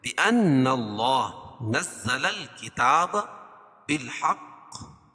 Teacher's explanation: وقف کی صورت میں زیر ہے اس کو جزم سے بدلیں گے تو یہاں قلقلہ ہوگا.